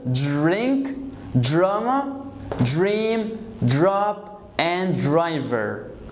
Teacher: D plus R is J.